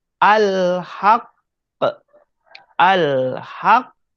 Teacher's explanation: Perkataan al-haqqu ni, al-haqqu, ketika kita berhenti, maka terjadilah qalqalah akbar.